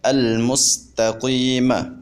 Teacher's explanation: ہم قاف کو یا مدہ کی وجہ سے ایک الف کے برابر لمبا کر کے پڑھیں گے۔ اب ہم یا مدہ کو بھی وہیں سے ادا کریں گے جہاں سے ہم نے الف مدہ کو ادا کیا تھا، یعنی جوف دہن سے، منہ کے خالی حصے سے۔